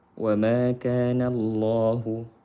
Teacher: Lam jalalah tafkhim karena sebelumnya fathah.